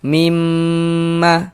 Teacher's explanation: Jadi di bagian mimnya itu suaranya itu kita tahan, kita panjangkan sejenak kira-kira sepanjang dua harakat. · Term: ghunah